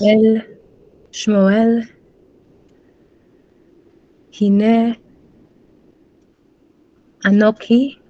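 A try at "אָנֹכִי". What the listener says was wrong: Let's get the chaf rather than a kaf. Anochi.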